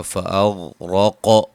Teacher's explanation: غین کو موٹا، را کو موٹا، قاف کو موٹا، قاف پہ قلقلہ